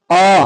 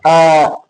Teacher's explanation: आप उच्चारण करके देखिए, पूरा पूरा मुख खुल जाता है, आ मुख खुल गया ना, तो कौन सा होगा, विपरीत स्वर होगा।